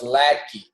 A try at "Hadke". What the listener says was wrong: Hadke. Hadke, the L silent.